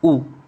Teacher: आपका पश्च स्वर होगा ऊ, ना कि ई